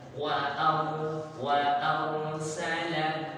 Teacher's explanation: Sekali getar saja tapi jangan berlebihan. Karena nanti kalau getarannya banyak berakibat harokat tambahan, ada tambahan harokat berarti. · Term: huruf ra